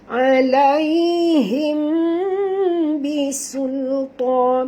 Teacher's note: Okay, kenapa warna hijau ni? Kerana mim ini bertemu dengan huruf dengung, iaitu huruf ba, ikhfa syafawi. Jadi kena dengung ya.